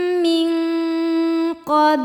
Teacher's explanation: bunyi Nun disamarkan ke qof disertai bunyi dengungan jadi kita sudah menyentuh makhraj huruf qf yaitu pangkal lidah kita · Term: ikhfa Hakiki